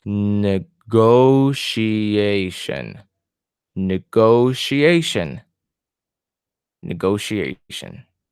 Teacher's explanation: my stress is in the second to the last syllable